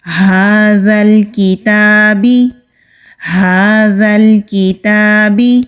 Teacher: سامنے کے جو 2 دانت ہیں وہاں پر نرمی کے ساتھ ٹچ کریں گے تو ذال نرمی سے ادا ہوگا۔ کاف باریک، تا کے اوپر کھڑی زبر، ایک الف کے برابر کھینچ کر پڑھنا ہے۔